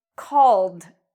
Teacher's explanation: Here we have an L. Call ends in the L sound. So when we pronounce call, we pronounce ed like a D.